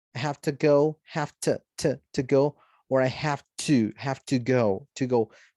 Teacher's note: casi siempre cuando lo dices rápido no vas a decir to completo